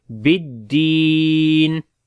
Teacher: با کو دال کے ساتھ تھوڑا سٹرونگ ملائیں گے اور دال کو لمبا کریں گے، یا مدہ ہے